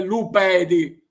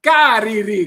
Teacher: la transformación de la letra D en R, de la D intervocálica en R